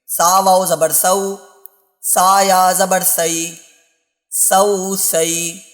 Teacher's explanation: سا کو ادا کرنے کا آسان طریقہ یہ ہے، اور یہی معروف طریقہ ہے، کہ سا کو ادا کرتے ہوئے آپ نے اپنی زبان کو دانتوں کے بیچ میں رکھنا ہے، ٹھیک ہے۔ اگر آپ زبان کو اپنے دانتوں کے بیچ میں رکھیں گے تو آپ سا کو صحیح سے ادا کر سکیں گے۔